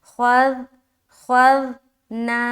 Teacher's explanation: تو حمزہ زبر آ، خوا ذال زبر خذ، خا جو ہے نا موٹے حروف میں سے ہے لہٰذا موٹا ادا کرنا ہے